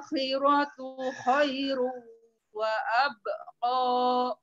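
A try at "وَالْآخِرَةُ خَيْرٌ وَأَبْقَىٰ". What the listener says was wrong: Coba diulang wal akhir di ayat mawon tidak boleh wal a tidak boleh terlalu banyak wal akhiratu khairu wa abqa.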